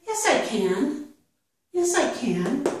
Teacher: you would emphasize can. You would give the full vowel sound the /æ/ sound